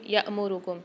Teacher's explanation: یہاں حمزہ کے اوپر سکون آ رہا ہے الف کے اوپر، تو یہاں پر ہم جھٹکا دے کے پڑھیں گے